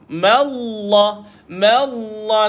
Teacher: jangan tuan-tuan sesekali membacakan Ma itu dengan tebal Ma itu nipis